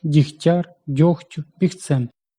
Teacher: Тому що «к» та «ті» глухі. Вони оглушують попередній «г» і той перетворюється на «х».